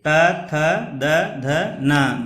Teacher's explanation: दंत से त थ द ध न दंत से होता है